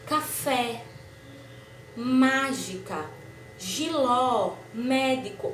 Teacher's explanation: olha como minha boca se abre mais tem um som mais aberto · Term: acento agudo